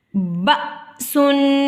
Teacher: بأسن، تنوین کے بعد شین آ گیا، یہاں پر اخواء مرقع کا ادا ہوگا، یعنی کہ ناک میں چھپا کر ایک الف کی مقدار میں غنہ کریں گے اور باریک اخواء ادا کریں گے